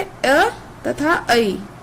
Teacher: अ तथा ऐ। ये दोनों कंठ तालव्य में आ जाएंगे।